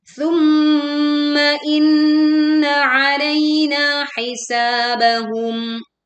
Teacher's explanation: Mim dan nun bertasydid dibaca dengung dengan sempurna. Tidak tergesa-gesa.